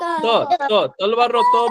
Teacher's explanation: તો ત બોલો તો દાંતને અડે છે જીભ. પાછળની બાજુ દાંતની પાછળની બાજુ અડશે.